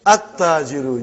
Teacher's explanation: You did not pronounce lam. Why you did not pronounce? Because it is sun letter.